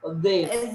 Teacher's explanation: Lidahnya tuh di antara dia keluar tapi dijepit sama gigi atas sama gigi bawah